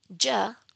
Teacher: In the case of its counterpart, the sound j, j, there is vibration of the vocal cords, and this is why the sound is called voiced postalveolar affricate